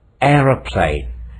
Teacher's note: Three syllables. Air is a glide. Ra is a short syllable. Plane is a third syllable. Where is the stress? Stress is on air.